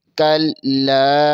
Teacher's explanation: کاف زبر کو لام کے ساتھ ملائیں گے، لام کے اوپر شد ہے اور لام کے اوپر زبر ہے اور لام زبر کے آگے الف مدہ بھی ہے، اسے ایک الف کے برابر کھینچیں گے۔ کلا، آگے دوسرے لام کے اوپر پھر زبر ہے، اسے بغیر کھینچے بغیر جھٹکا دیے پڑھیں گے۔